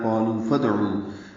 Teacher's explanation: یہ دال ساکن پہ قلقلہ اور عین لمبا کریں گے